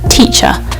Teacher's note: You want to really make sure that that T sound is there, but it's not a very hard T that you spit out. It's like a sort of light T.